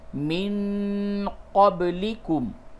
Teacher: یہ نون ساکن کے بعد قاف ہے، اس جگہ پہ اخفا ہوگا